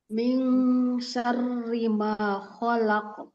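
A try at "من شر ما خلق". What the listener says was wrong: manya kurang dua harakat ya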